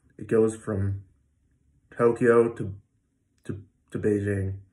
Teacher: The from and the to get so small, you almost don't hear a vowel at all. And that's a reduced vowel.